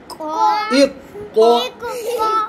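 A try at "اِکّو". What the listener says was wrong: इक्को नहीं करना सख्त करना,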